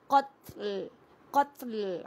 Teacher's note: Sifat ta ialah hamas. Keluarkan angin hamas pada huruf ta.